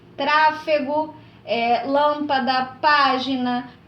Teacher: essas palavras que têm a antepenúltima sílaba mais forte